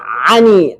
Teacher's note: makhraj huruf Ain berada pada tengah-tengah tenggorokan